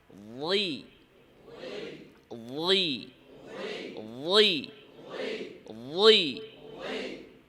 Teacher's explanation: যেহেতু তার উচ্চারণের ভিতরে ভাঙ্গার বিষয় আছে। দাঁতের নিচের পাটি নিচের দিকে দিয়া, জিহ্বার মধ্যখান উপরে। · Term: কাসরা